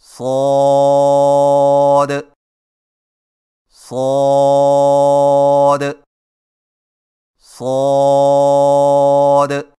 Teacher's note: صاد کی ادائیگی میں زبان کی نوک کو ثنایا سفلی کے کناروں سے مضبوطی سے لگا کر اور زبان کے پچھلے حصے کو تالو کی طرف بلند کرتے ہوئے موٹی اور سیٹی جیسی آواز میں پڑھیں